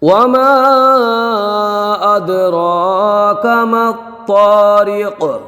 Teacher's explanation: دال ساکن ہے اور چونکہ دال حروف قلقلہ میں سے ہے تو اس میں قلقلہ ہوگا۔ را کو 1 الف کھینچ کے پڑھیں گے، را کے اوپر کھڑی حرکات ہے۔